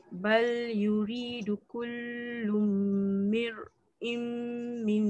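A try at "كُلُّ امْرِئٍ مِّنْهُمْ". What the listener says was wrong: Kullu mir'im minhum. mim tak dengar. Masuk ro terus. Kullu mri. Kullu mri'im minhum. Kullum ri'im.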